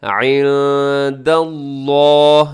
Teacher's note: لفظ اللہ کو آپ نے موٹا پڑھنا ہے کیونکہ اس سے پہلے دال کے اوپر زبر ہے، آپ اسے موٹا پڑھیے گا، اور اس کے بعد یعنی لفظ اللہ کے بعد آپ کو رموز اوقاف میں سے طا نظر آ رہا ہے، آپ یہاں پہ وقف کر سکتے ہیں۔